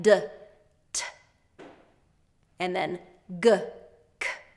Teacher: same mouth position, but the voicing is different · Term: voiced and a voiceless pair